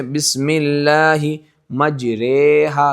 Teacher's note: اور امالہ کا معنی یہ ہے کہ زبر کو زیر کی طرف اور الف کو یا کی طرف مائل کرنا، زبر کو بالکل زیر نہیں کرنا، مائل کرنا ہے زیر کی طرف، زبر اور زیر کی درمیانی حالت۔ اور بعض لوگ مجریحا پڑھتے ہیں، یہ بھی سخت غلطی ہے، یہ کھڑی زیر کو دیکھ کر مجریحا پڑھتے ہیں، وہ بھی غلطی ہے۔